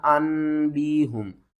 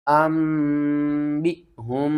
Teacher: نون ساکن اور تنوین کے بعد اگلا حرف اگر با ہوگا تو ہم نون کی آواز کو میم کی آواز میں بدل کر پڑھیں گے